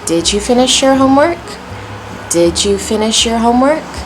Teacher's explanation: Notice I'm starting down, finish your homework, going up. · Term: rising intonation